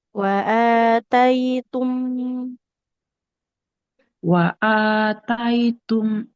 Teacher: hamzahnya dipanjangkan, ya Bu ya karena ada alifnya